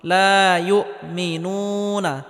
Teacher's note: পেশের বাম পাশে জজমালা ওয়াও মাদের হরফ 1 আলিফ পরিমাণ লম্বা করে টেনে পড়তে হবে।